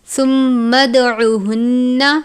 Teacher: میم مشدد پر غنہ کرتے ہیں، غنے کے ساتھ ہی قلقلہ کریں گے کیونکہ دال ہے